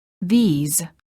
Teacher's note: The word these is plural and is pronounced with a long vowel E and a z sound.